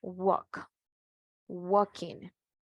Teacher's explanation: en su pronunciación de esta palabra, la letra L no se pronuncia, dice. Entonces, por lo tanto, podemos decir que la letra L en el verbo walk en inglés es silenciosa o muda.